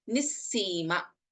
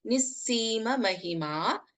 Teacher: Visarga and then we have Sa. This is pronounced as Nissima. We don't chant the Visarga here.